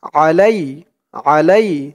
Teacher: আইনের উচ্চারণটা গলার ভেতর থেকে শক্ত করে আনতে হবে